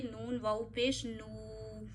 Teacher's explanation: واؤ ساکن سے پیچھے پیش ہے، واؤ مدہ کریے، واؤ کو 1 فنگر جتنا کھینچیے